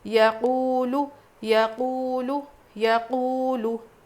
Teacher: لو نہیں کھینچیں گے بالکل بھی، زبر زیر پیش کو بالکل نہیں کھینچنا ہے